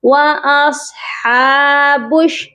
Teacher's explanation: صاد کو حمزہ کے ساتھ ملائیں گے اور موٹا بھی کر کے پڑھا جائے گا